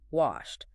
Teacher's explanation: Just air moving. >> Because your vocal cords aren't vibrating, it is biologically easier to finish the word with another voiceless sound, the sharp T.